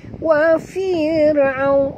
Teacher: ra bila dia mati huruf sebelumnya baris bawah, ra tarqiq tipis